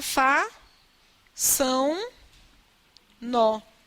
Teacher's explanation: Minha nasalização de façam, olha que é o final, é a última sílaba que é tônica. Essa nasalização ela vai atingir o pronome. Então vai ficar fa, são, nó, para acompanhar a nasalização.